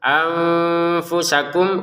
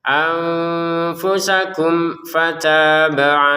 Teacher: Nun sukun bertemu fa disamarkan ya, anfusakum, mim sukun bertemu fa dijelaskan.